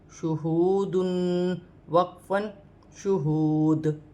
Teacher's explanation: شین پیش شو، ہا واو پیش ہو، شوہو، دال دو پیش دن، شہودن وقفاً شہود. وقف کی صورت میں دو پیش کی تنوین گر جائے گی اور دال ساکن ہو جائے گی